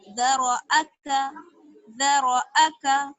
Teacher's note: را کو موٹا باقی سب کو باریک